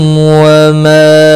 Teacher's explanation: وما ما یہاں پر مد منفصل ہے، تین الف کے برابر کھینچ کر پڑھیں گے